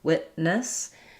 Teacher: So I don't say witness, but rather wit. I stop the tongue for the T, and then I go right into the N sound. Witness. And then this second syllable is unstressed.